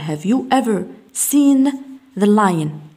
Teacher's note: نقول عن have ضعيفة تنطق بشوا لدينا الفاول يكون شوا. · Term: weak form